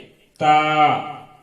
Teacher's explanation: زبان کی نوک اوپر کے دانتوں کے کنارے لگانے سے تا نکلتا ہے اور وہ پتلا نہیں ہوتا ہے.